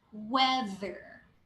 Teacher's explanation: the TH there is vibrating TH. Don't interchange with the D sound, so it's not weather.